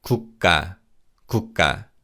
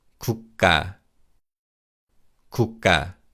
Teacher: the 기역 in the second syllable is pronounced as a tense consonant